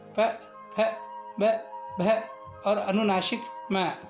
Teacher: इन वर्णों की उत्पत्ति अंतर्मुख से महाप्राण वायु बंद अधरों से टकराने पर उत्पन्न होती है। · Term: ओष्ठ